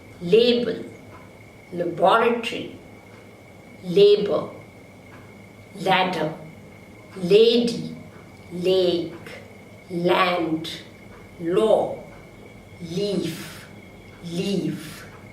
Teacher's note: The vocal cords vibrate, creating voice. So l is a voiced lateral consonant.